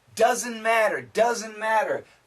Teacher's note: The N and the M cancel the T.